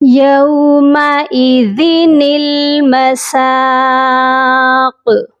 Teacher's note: جب آیت پر ہم وقف کریں گے تو قاف ساکن ہو جائے گا، تو ہم اس پر قلقلہ کریں گے